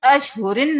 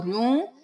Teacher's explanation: گے یہاں پر ادغام مع الغنہ کا قاعدہ ہو رہا ہے رو کو واو میں ہم مدغم کر رہے ہیں غنہ کے ساتھ